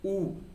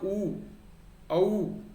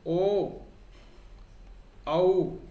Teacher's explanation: मेरा मुंह जो है यानी कि मेरे जो होठ हैं वो गोल हो रहे हैं